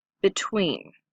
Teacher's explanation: in class different di FF er E and T different between listen carefully because we put the accent on tween